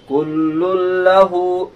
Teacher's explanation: تو لن کے بدلے لل ہو جائے گا، جہاں نون کی آواز 100% مکس ہو جائے گی لام کے ساتھ، ناک میں بالکل بھنک بھی نہیں لگتی ہے آواز کی۔